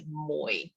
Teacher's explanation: you basically hold the tone it's a third tone it's a diphthong